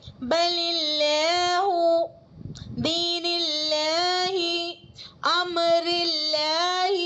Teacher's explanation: لفظ اللہ کے لام سے پہلے اگر زیر آتی ہے تو لفظ اللہ کے لام کو باریک پڑھتے ہیں